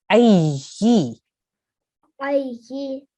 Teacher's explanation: we have a ya mushaddad, right? So we need to pronounce this ya really clearly, and we have to harden it, right? So you'll say ay.